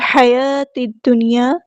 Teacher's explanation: ہا کو وسطی لیکن میرے تھروٹ سے ادا کریں گے